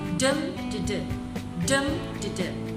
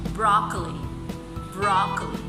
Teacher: So it begins with the stressed syllable followed by 2 unstressed syllables. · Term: dactyl